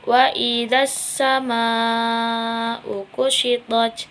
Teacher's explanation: Wa idzas sama alif lam syamsiyah karena ada al bertemu dengan asyamsiyah dan juga bertasydid, dibacanya itu dengan cara tidak membaca alnya tapi langsung mengidghamkan kepada asyamsiyahnya